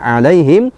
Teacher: huruf iya mati yang didahului harkat fathah disebut dengan harfulen, yaitu dibaca panjang 1,5 harkat, tidak boleh dibaca 1 harkat, tidak boleh dibaca 2 harkat.